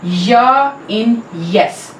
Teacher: Next, seventh is palatal. The front of the tongue is the active articulator and the hard palate is the passive articulator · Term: palatal, palatal sound